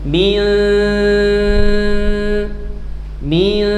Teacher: Suaranya dekatkan dengan makhraj syin. Syin itu tengah lidah. Wastul lisan. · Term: ikhfa